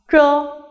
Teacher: Here ch is an unaspirated sound and the air flow is therefore very weak.